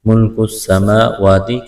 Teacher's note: کاف کو باریک کرنا ہے، کڑا زبر ہے کہ الف کے برابر کھینچنا ہے